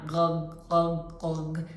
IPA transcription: g